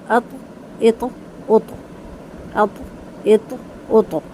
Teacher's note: قلقلہ ہوگا، ہلا کر پڑھا جائے گا اور پر کیا جائے گا